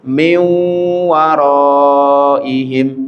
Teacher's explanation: Nunnya dimasukkan ke wawu, wawunya seakan-akan tasdid, kemudian ditahan dengan gunnah di atas wawu tersebut.